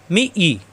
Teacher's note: আমরা জানি তাজদিদ আলা হরফ ডান দিকের হরফে প্রথমবার ধরে, তাহলে এই মি মিলবে ইয়ার সাথে মি পরে ইয়ায় জের মি মি এই মি মিলবে ইয়ার সাথে জিব্বার মাঝখানে উপরে তালুতে লাগবে